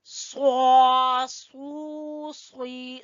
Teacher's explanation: स्वाद को पुर पढ़ेंगे।